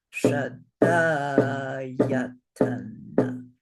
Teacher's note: So this word has 5 syllables, but 6 beats. So 4 short and 1 long.